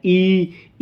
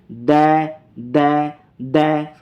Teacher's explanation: ई बोलोगे तो आपका तालू का प्रयोग होता है